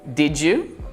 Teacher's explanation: Did you notice how I connected the final d on did with y in you?